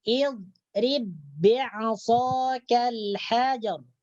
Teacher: Jadi ba yang pertama ini dimasukkan ke dalam ba yang kedua. Jangan sampai dibaca terpisah. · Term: idgham mutamasilain